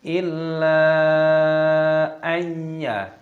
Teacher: Illa, panjangkan 5 ketukan. Illa ayya, nun sukun bertemu dengan ya, hukumnya dibaca idgham bi gunnah, dimasukkan dan disertai berdengung